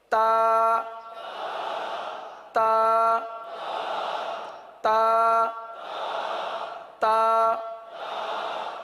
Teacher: تو تا کے اندر سختی ہے، شدت ہے. تو اس کو شدت کے ساتھ ادا کریں گے. تا تا تا تا، یعنی ہلکی سی چپکتی ہوئی.